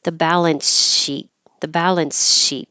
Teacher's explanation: you have to take a tiny pause in order to make a difference between your S ending and your sh beginning.